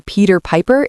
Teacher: The letter P in Peter Piper is a plosive. Feel the tiny pop when you say it.